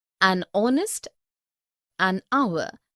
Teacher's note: begin with a vowel sound as the initial consonant h is not pronounced